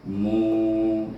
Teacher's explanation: Sebelum waw baris depan, dia mesti dibaca dengan mad asli dua harakah, iaitu mu.